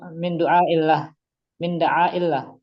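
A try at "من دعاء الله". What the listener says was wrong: Di tomah dalnya min du'a illah. Min du'a illah, tapi di domah pada dalnya tadi. Harokat hamzahnya betul tadi kasrah.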